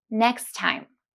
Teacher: we omit one of the two t between next and time